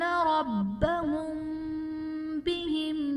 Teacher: ربهم بهم میں میم ساکن کے بعد حرف با ہے، یہاں پر اخفاء شفوی کا قاعدہ ہوگا، یہاں پر میم ساکن میں ہم غنہ کر کے پڑھیں گے۔